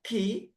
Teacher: ketika menyebutkan ke ah itu ada nafas yang mengalir menyentuh tangan, telapak tangan. Nafas yang keluar itu ketika kita mengucapkan ki ah itu disebut dengan hames.